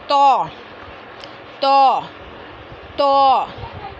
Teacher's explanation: ज़बान की नोक और सामने के ऊपर वाले 2 दांतों की जड़ से अदा होता है। ज़बान की नोक को कहाँ लगाएंगे, सामने के ऊपर वाले 2 दांतों की जड़ में।